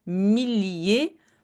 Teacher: double l on prononce pas comme y on prononce vraiment l